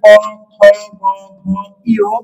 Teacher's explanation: ক বর্গীয় বর্ণ বলতে বলতে ক, খ, গ, ঘ, ই এই পাঁচটা বর্ণকে এই পাঁচটা বর্ণের উচ্চারণের স্থান হলো কন্ঠ